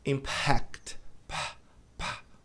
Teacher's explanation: Esse f indica que depois do p tem o que a gente chama de puff de ar